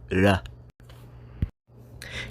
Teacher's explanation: the japanese r sound is actually somewhere between an r and an l sound